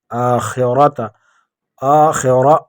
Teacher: لل آ کھڑا زبر ہے، ایک الف کی مقدار اس کو کھینچیں گے۔ آخرت آخرہ را کو پر پڑھیں گے